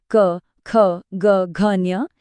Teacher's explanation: इसकी आवाज सीधे कंठ यानी गले से आती है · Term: क वर्ग